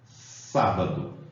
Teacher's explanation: a sílaba tônica é a antepenúltima isso quer dizer terceira de trás para frente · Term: palavra proparoxítona